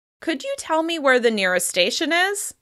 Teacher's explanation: you want to use rising intonation, just like we do on normal yes-no questions